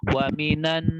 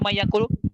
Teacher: Gunnah pada nun yang bertasydid dengan gunnah pada pertemuan nun sukun dengan ya